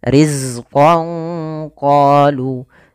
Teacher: sempurnakan daripada sifat zai, yaitu salah satu sifatnya adalah sifat jaharnya, tertahannya nafas tapi mengalirnya suara, yaitu sifat rokhawahnya.